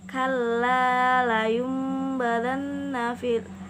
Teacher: tool yang awalnya tulisannya nun sukun bertemu dengan Mbak di situ nun sukun nya diubah menjadi huruf dibaca menjadi mim sukun kemudian disembunyikan ke dalam huruf ba lalu dibaca dengan dengung